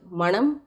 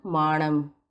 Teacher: குறில் நெடில் மாற்றம் பெற்று பொருள் வேறுபாடு